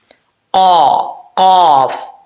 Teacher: اس کا مخرج کیا ہے؟ زبان کی جڑ اوپر والے تالو کے نرم حصے سے لگے تو قاف پڑھا جاتا ہے، فل ماؤتھ. ٹھیک ہے، یعنی موٹا پڑھا جائے گا، پر پڑھا جائے گا.